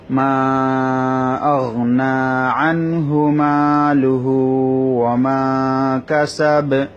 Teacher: এটা হচ্ছে ইজহার, অর্থাৎ নুন সাকিন এবং 2 জবর 2 জের 2 পেশের পরে, যে 2 জবর 2 জের 2 পেশের পরে যদি হামজা হা আইন হা গইন খ আসে তখন ইজহার করে পড়তে হয়, অর্থাৎ স্পষ্ট করে পড়তে হয়। নুন সাকিন এবং তানবিনটাকে গুণনা করা যাবে না, নাকের বাসির মধ্যে আনা যাবে না, স্পষ্ট করে পড়তে হবে। এভাবে স্পষ্ট করে পড়াটাকে ইজহার বলা হয়।